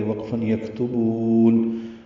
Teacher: یکتبون میں کاف ساکن ہے، اس کو نرمی سے ادا کریں گے، اس پہ حمس ہوگا